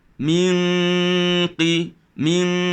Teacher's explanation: Dengung itu pun tebal kerana dia berada di tepi huruf qaf. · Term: ikhfa hakiki